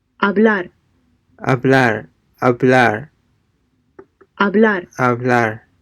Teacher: note that the bv sounds are softer do not let your lips touch one another